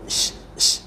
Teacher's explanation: syin ni satu-satunya huruf yang dipanggil tafasi. Tafasi ni apa? Berhamburan. Jadi mesti sh, sh, mesti bunyi macam tu lah kan.